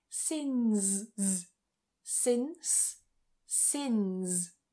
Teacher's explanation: get that voicing with the z in particular at the end of words